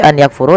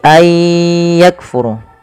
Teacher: memasukkan bunyi Nun kepada huruf setelahnya kemudian disertai dengan gunah · nunnya dianggap tidak ada langsung dibaca ke ya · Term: Idgham, idgham bi gunnah